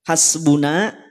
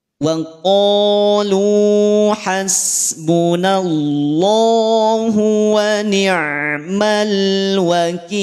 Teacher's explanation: nun pada lafaz hasbuna jangan sampai dibaca tebal. Tidak tebal, dia tetap tipis karena punya sifat istifal wa raqiqan mustafilan min ahrufi.